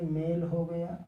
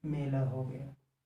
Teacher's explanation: मेल पे जितना जोर पड़ रहा है उतना जोर मेला पर नहीं पड़ रहा है, बल नहीं बढ़ रहा है। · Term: बलाघात